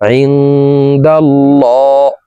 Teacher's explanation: আল্লাহ শব্দের আগের হরফে জবর আছে এই কারণে এই লামকে ল বলে পড়ব অর্থাৎ মোটা করে পড়ব